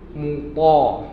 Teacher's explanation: huruf ta dia tebal. Huruf ta ni ujung lidah sama dengan ta, tengah lidah ke dalam